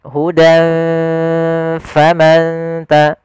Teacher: Karena makhraj fa itu di bibir, maka kita samarkan ke bibir kita dengan seakan-akan kita langsung mau mengucapkan huruf fa. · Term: ikhfa